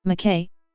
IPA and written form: mæˈkiː (Mackay)